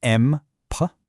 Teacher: is the student always dropping the short vowel sound, turning map into just m P?